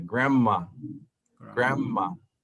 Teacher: es como si la n se convirtiera en m y la d no se pronuncia